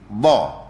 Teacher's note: dhat ni dia berada di tepi daun lidah kita dekat pangkal gusi, bukan pangkal gigi. Kanan ataupun kiri.